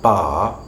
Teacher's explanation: in the type of English that I speak we do not have post vocalic r